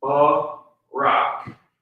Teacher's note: The Ra and the Ka are connected so that that vowel sound drops off of the Ka, and you're left with the consonantal value.